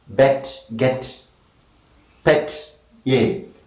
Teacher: front, between half open and half close, unrounded, short sound